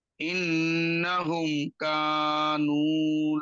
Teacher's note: মিম সাকিনের পর কাফ, সুতরাং গুন্না হবে না